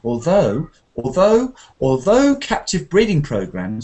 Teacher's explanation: the although wants to be really rising intonation at the end. Although captive breeding programs, because we're leading into the surprise.